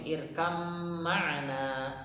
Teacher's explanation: Idgham mutajanisain yang ba ketemu mim, ya. Ba-nya langsung hilang, langsung masuk ke mim